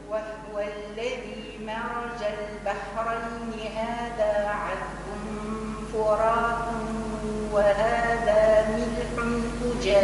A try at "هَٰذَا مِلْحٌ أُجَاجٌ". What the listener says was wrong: ملح، ملح ضمة الحاء. ملح أجاج.